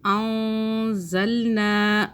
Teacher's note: نون ساکن پہ ہم اخفا کریں گے، نون کو چھپا کے پڑھیں گے، زبان تالو سے ٹچ نہیں کریں گے۔